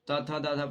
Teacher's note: त थ द ध पढ़िएगा तो जीभ होगा जो दांत में सटेगा।